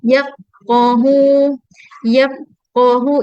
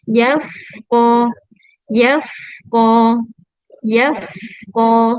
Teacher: Huruf fa tu dia teruskan bunyi dia sampailah bertemu huruf qaf. Sampai masuk pada huruf qaf. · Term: rakhawah